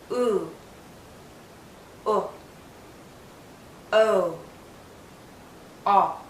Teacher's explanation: say the back vowels what do you notice about my lips watch the position of my lips as I say these four sounds ooh o o o my lips are rounded now some sounds require more of a circle than others but